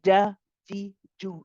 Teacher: the middle of the tongue rises for the jim